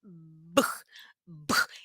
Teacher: B explode o ar os lábios estão Unidos e faz a força no pescoço